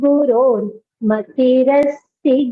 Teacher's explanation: So, I pronounced this particular sign, which is called Visarga. And then when I chanted the shloka continuously, I pronounced it as a R, Guror Matirasti.